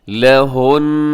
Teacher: یہاں وقف کریں گے تو آپ نون کی آواز کو آپ ناک میں لے جائیں گے، یہاں پہ غنے کے ساتھ آپ نے وقف کرنا ہے، لہن، ایسے۔